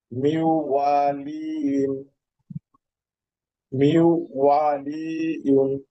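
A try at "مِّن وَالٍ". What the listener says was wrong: ওয়াটা একটু টান হয়ে যাচ্ছে, এটা টান হবে না, দ্রুত পড়তে হবে। মিউ ওয়ালি মিউ মিউ, এখানে একটু আপনার লম্বা হবে। মিউ ওয়ালি মিউ, এটাকে নাকি নিয়ে যাবেন।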